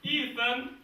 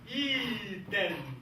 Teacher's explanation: we would say the TH sound like a D. Then this would make the sound like Eden.